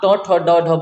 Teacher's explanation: अगर आप ट ठ ड ढ बोलते हैं तो आपकी जीभ जाके मूर्धन्य पे टच होती है